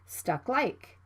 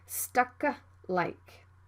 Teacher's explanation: Another example is stuck like this. The plosive consonant K is right before the consonant L, so it can be unreleased. You need to stop the K sound and move to the L sound right away, stuck like.